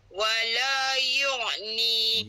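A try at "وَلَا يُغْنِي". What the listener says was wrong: Yughni. Bukan yu'. Bukan yu' lah. Bukan huruf ain. Huruf ghain. Yughni. Yughni.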